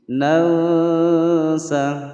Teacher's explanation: nun sukun bertemu dengan sin, dibaca samar disertai dengungan selama dua ketukan, hukum bacaan ikhfa.